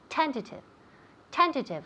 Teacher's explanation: now pay attention to where we put the emphasis it's on the first syllable